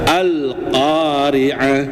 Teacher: Al-qa tanpa ada pantulan ya.